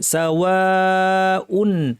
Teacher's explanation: এখানে আলিফ আছে, এই আলিফের পর হামজা একই শব্দে মাদ মুত্তাসিল 2 আলিফ পরিমাণ টানতে হবে, অর্থাৎ মুসা বলতে যতটুকু সময় লাগে।